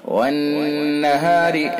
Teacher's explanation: نون حرف مشدد ہے لہذا اس کے اندر حرف غنہ ہوگا، ایک الف کے برابر ناک میں آواز لے جائیں گے